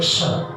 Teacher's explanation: उसको कहते हैं क्ष, आधा क और मूर्धन्य श